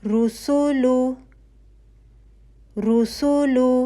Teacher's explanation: आपका होठ जो है वह गोल होगा पेश के लिए और वन वन काउंट ठीक है वल द के ऊपर फता